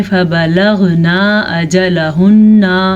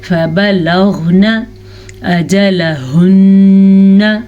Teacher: آخری حرف لمبا نہ ہونے پائے نون کے اوپر زبر کی وجہ سے